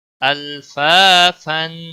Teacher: अल लाम को हिलाना नहीं है, लाम पे कलकला नहीं होगा